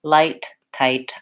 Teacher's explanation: So what you might notice is that if I try to do an L and I try to make it the same as the L in, for example, the word light, when I say light, my tongue goes behind my teeth, and it's a similar position for the L as for the T. Light, tight, I can feel that my tongue touches up there. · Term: front L